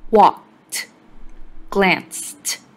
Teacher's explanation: In walked and glanced, the ed makes a t sound.